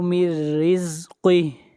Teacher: یہاں پر نون ساکن کے بعد حروف یرملون میں سے را ہے، ادغام بلا غنہ ہوگا